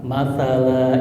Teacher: Jadi lamnya ketika diwakafkan maka dibaca dua harakat dihilangkan satu fathahnya. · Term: mad iwat